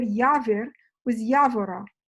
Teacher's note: They are both getting stress on the initial syllable of the stem